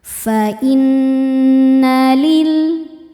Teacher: Di sini ada hukum tajwid namanya ghunah musyaddadah. Sebab nunnya bertasydid. Cara bacanya berdengung ya. tahan dengungannya kurang lebih dua harakat. · Karena lamnya ini bertasydid. Lam tasydid mengandung dua huruf lam. Lam sukun dan lam fathah. Yang sukun tidak dibaca masuk langsung ke lam kedua. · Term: alif lam syamsiyah